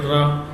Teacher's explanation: तो लुंठित और प्रकंपित यानी कि हमारी जीभ लुढ़क कर कहाँ जाती है, बाहर की तरफ जाती है रा, और थोड़ी सी इसमें कंपन भी होता है रा बोलने पे।